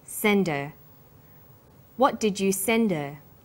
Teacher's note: Because her is not stressed, we drop the initial h sound.